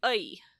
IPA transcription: ʌi